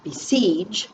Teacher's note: siege is stressed harder so we circle and read the word c the syllable siege